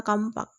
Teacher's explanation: Kita lihat bunyi M disisipkan di tengah kata kapak. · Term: epentesis